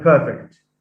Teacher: perfect has stress on the first syllable